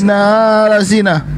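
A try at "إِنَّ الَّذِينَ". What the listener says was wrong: Kok panjang? Kenapa bisa hurufnya panjang? Huruf nunnya apa tanda baca di situ yang Anda gunakan sampai nunnya panjang, Ustaz?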